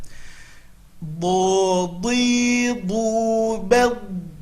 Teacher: Huruf do makhrajnya adalah tepi lidah ke gigi geraham atas